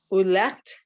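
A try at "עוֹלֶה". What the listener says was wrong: Ole. Okay, and again, just the silent, the hey at the end. So just the breathing.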